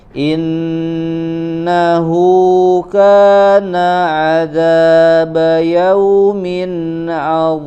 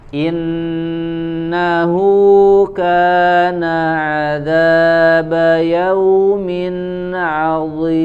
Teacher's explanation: Nun ya, ada tambahan gunnahnya dengung.